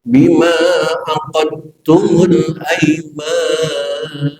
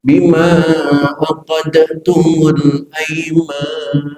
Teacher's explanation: Yang pertama saya baca bima aqadtumul aiman, dalnya dihilangkan, aqadtumul aiman. Bacaan yang kedua Saya baca dalnya dikolkolahkan.